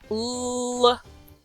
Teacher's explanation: The last one in this line is just capital L. It's a long L noise. It's more similar to the L that shows up at the end of words and not the L at the beginning of words.